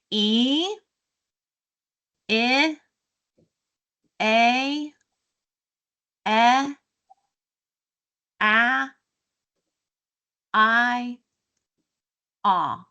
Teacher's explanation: our mouth was all opening, so we've started tight smile and got to low and open. Yes jaw lowers mouth opens perfect, okay?